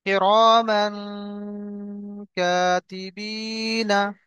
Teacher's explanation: তো এই তানবিনের পরে দেখেন হরুফে হালকির 15টি অক্ষরের মধ্যে থেকে কাফ এসছে, তাহলে এখানে কি হবে? এই তানবিনের আওয়াজকে নাকের মধ্যে তুলে একালি পরিমাণ গুণনা করতে হবে। · এখানে নুনকে একালি পরিমাণ গুণনা করে পড়তে হবে